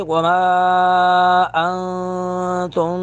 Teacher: ما پر مد منفصل دو الف کے برابر کھینچیں گے